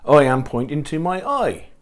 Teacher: the sound I is pronounced as oi